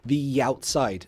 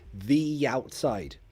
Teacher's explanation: also connected speech. We connect it with a Y.